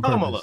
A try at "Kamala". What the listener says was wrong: What I'm saying is the emphasis on the first syllable, not the second.